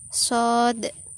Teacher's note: vokal yang timbul karena lidah bagian tengah digunakan. Letaknya di bawah, mulut tidak bundar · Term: Fathah panjang